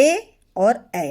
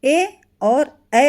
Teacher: ऐसे स्वर जो आपके कंठ और तालु दोनों जगह आपकी जिह्वा छूती है। इसमें आपके ए और ए आते हैं। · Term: कंठ तालु